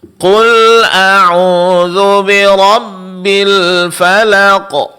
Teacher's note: Hati-hati pada huruf lam. Di sini lam tetap ditipiskan, jangan terpengaruh oleh ketebalan huruf qaf sebelumnya